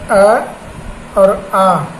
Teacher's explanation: जिसमें आपका अ और आ, इनका उच्चारण स्थान आपका कंठ है